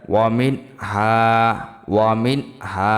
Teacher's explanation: মিম নুনজের মিন, হা আলিফ জবর হা, মিন গুণ্য হবে না, ইজহার। নুন সাকিন ও তানবিনের ইজহার।